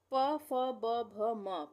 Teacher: इस तरह से बोल के देखेंगे हमारे दोनों होठ आपस में मिल रहे हैं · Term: ओष्ठ